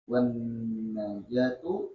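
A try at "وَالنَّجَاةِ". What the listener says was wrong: Itu tuh intonasi tuh, itu yang bikin ente baca salah. Ilal fauzi bil khairi wan najati minasyarri al waqi'aini wal paman ahmalaha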